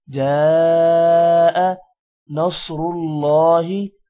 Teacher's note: صاد موٹا ہوگا، را بھی موٹا ہوگا، اللہ کا نام بھی موٹا ہوگا